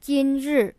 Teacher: 今, the first tone means today, and 日, the fourth tone means day